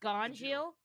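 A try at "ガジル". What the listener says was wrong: That is not how it's spelled in the manga. It is G-A-J. Gajil sounds better than Gonjil.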